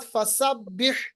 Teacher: यहाँ पर हा को वस्ते हलक से निकालिए